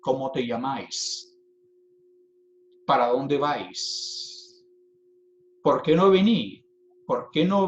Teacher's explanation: existe lo que llamamos aspiración en la s en posición final al final de sílaba final de palabra a veces lo que ocurre es una asimilación de la s